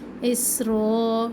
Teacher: سین میں سیٹی اور سختی